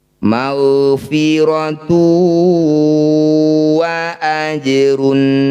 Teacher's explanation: Dhammah tanwin bertemu waw disebut bacaan idgham bi gunnah. Bunyi dumah tanwinnya masukkan pada waw, dengungkan 2 harokat.